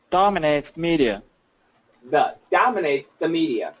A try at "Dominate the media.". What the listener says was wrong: Good. Now put it together.